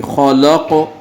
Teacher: خلق، یہاں ہم وقف کریں گے تو اس کو قلقلہ، حروف قلقلہ میں سے قاف آیا ہے تو آواز ڈبل آئے گی